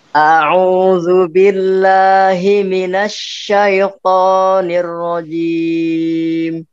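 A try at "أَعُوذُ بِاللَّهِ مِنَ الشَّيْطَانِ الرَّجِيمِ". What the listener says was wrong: To-nya terlalu panjang, Pak. Jadi to-nya jangan terlalu panjang.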